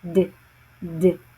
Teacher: Then we have the alvear aar sound as in the word bed. The sound D is produced with the tongue at or near the ridge right behind the upper front teeth.